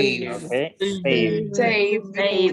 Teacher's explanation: Necesita sonar ese D al final. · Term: sonido d